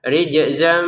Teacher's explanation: Kita masukkan tanwinnya ke mim. Disertai dengungan.